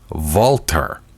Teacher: Walther Well w has a v sound with in German well the th is pronounced as a t sound